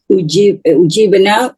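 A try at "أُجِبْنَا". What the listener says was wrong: Janya, jimnya tidak panjang. Ujibna, begitu.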